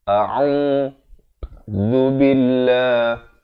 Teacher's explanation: Zu di hujung lidah. Billah dibaca nipis, 2 harakat.